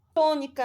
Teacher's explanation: na palavra tônica aqui você vê o tó, é a sílaba tônica. É a terceira sílaba de trás para frente, então é a antepenúltima sílaba.